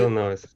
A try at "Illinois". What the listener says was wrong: Yeah, but now this is not Illinois. You pronounce it Illinois. Illinois. The S on the end is silent.